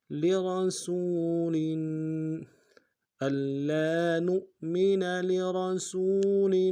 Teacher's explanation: الا نؤمن لرسول، لام کو نون سے ادا کریں گے، واو کو موٹا ادا کرنا ہے، سین کی سیٹی باریک کو، سین کو واو کو سامنے لانا ہے، واو مدہ، ایک الف دال میں کھینچیں گے، لام کے نیچے تنوین ہے، غنہ کریں گے۔